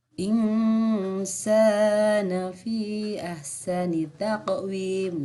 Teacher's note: Nah, selanjutnya ini adalah hukum bacaan ikhfa. Ada nun sukun ketemu dengan sin. Cara membacanya dibaca samar dan dengung.